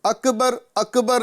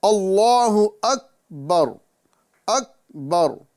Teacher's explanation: اس کا صحیح تلفظ یہ ہے کہ ہم اس میں جلالت اللہ کے لام کو پر کریں اور اس کو ایک الف کے برابر کھینچیں، اور ساتھ ہی ساتھ کاف کی ادائیگی کا خاص خیال رکھیں۔ یہ کاف کو قلقلے کے ساتھ نہیں بلکہ بغیر قلقلے کے ادا کرنا ہے